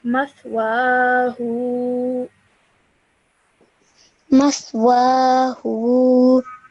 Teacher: So ha has inverted dhamma, so you would say the hu for 2 seconds.